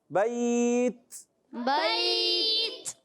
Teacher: تا جو ہے یہ شدیدہ محموسہ حرف ہے، شدت کی وجہ سے سختی کے ساتھ آواز بند ہوتی ہے